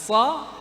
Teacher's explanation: makhrajnya itu ujung lidah dengan bagian dalam gigi seri bawah. Nah, sa di ujung.